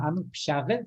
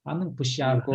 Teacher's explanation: Почему? Потому что гласные звонкие, и у нас глухой звук тоже оно становится звонким, как бы в солидарности с этим звонким.